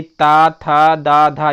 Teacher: ता वर्ग का उच्चारण स्थान क्या होता है, दंत होता है। तो यहाँ पर देखिए धा जो है वो ता वर्ग में आता है और इसका उच्चारण स्थान दंत होता है।